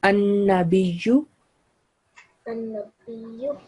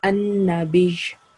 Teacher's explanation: Mushaddad letter will be pronounced with sukoon when we are doing waqf and tashdid will be lightly manifested.